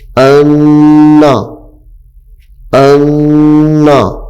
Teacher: یہاں پہ نون مشدد ہے تو اس کو غنّے کے ساتھ پڑھیں گے